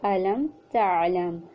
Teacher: میم ساکن پر اظہار ہوگا، یعنی غنہ نہیں ہوگا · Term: اظہار شفوی